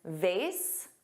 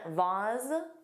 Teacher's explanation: vase, which rhymes with face, and vase, which has an ah but a z sound